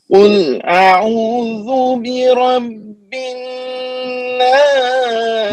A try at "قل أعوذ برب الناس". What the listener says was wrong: نہیں بنا ابھی دیکھو لمبا بھی کریں غننے کو نا، یہ کلف کی بتا رہے برب الناس جی.